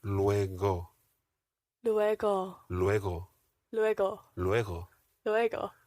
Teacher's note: The G in hasta luego is a very soft G.